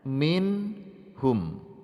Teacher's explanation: jelas dan hukum bacaannya adalah bacaan idhar halqi terakhir contohnya minhum membacanya harus jelas tidak boleh dibaca samar-samar dan juga tidak boleh dibaca mendengung suara Nun nya harus tampak